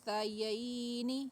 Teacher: ہم نون کو تھوڑا چھپائیں گے اور آواز کو ناک کے بانسے کی طرف کھینچ کے لے کے جائیں گے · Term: اخفا